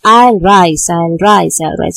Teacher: So in both I'll as well as in rise, I rise and I rise, it is stressed. Both I and rise are stressed. It gives emphasis, it gives strength. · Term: rising meter